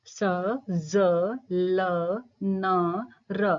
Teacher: दांतों के पीछे का जो खुरदरा भाग है वहां पर जो है जीवा स्पर्श कर रही है छू रही है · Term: वत्सर्य